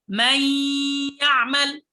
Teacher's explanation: الحقيقة أننا أبقينا من النون صفة الغنة، لأن النون هنا، النون عبارة عن جزئين، جزء من الفم وجزء من الخيشوم. أزلنا جزء الفم ودخلنا على الياء مباشرة باللسان، ثم أبقينا جزء الغنة وطولناه مع هذا الإدغام، فنقول من يعمل، فتكون الغنة هنا بمقدار حركتين مع الإدغام في الياء، فنقول مي الياء مباشرة، لكن مع التشديد والغنة حركتين، فنقول من يعمل من ولي. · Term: الإدغام بغنة